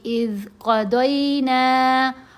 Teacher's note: قاف کو بھی پر پڑھنا ہے، موٹا پڑھنا ہے